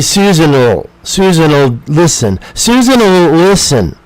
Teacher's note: We have that small sound oh. We don't say will. We say oh.